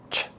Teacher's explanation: this is a short sound or a stop sound. We can’t hold it out